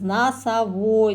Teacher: в слове носовой первый и второй О, они безударные. Біз оны А деп естиміз, носовой деп.